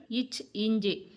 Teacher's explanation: நாவின் இடைப்பகுதி நடு அன்னத்தின் இடைப்பகுதியை பொருந்துவதால் பிறக்கும் எழுத்துக்கள்